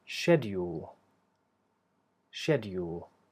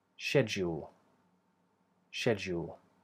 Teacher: And the other version begins the same way, she, and then here we have, instead of a d, a hard d, using the tip of the tongue, we have a j sound